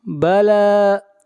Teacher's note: لام کو کھینچ کر پڑھیں گے ایک الف کے برابر، لام کے اوپر کھڑی زبر ہے۔